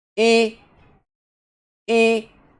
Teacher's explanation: pronouncing a vowel with its articulation places but in a high tone that is called udata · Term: udata vowel